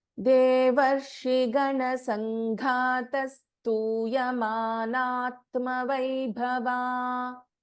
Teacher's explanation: In Sanghata, Gha is a Mahaprana.